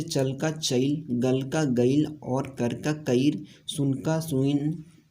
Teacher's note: खोटा समेत झारखंड की सभी सदानी भाषाओं के मध्य स्वरागम की प्रकृति पाई जाती है।